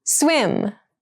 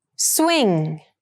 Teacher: Swim has the bilabial sound, and swing has the velar sound.